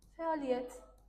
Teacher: Fərq harda oldu? Iyyətdə y-nın biri düşür.